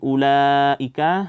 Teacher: di situ ada mad wajib muttasil panjangnya 4 atau 5 harakat